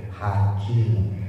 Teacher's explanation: Hakim, haknya tipis, kafnya kasih hamas.